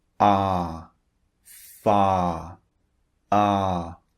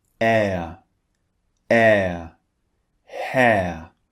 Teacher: So this is one of the differences between these two sounds. As I said, the first one is long, ah, and the second one is actually two vowels squeezed together. That's why we change the shape of our mouth when we say this second vowel.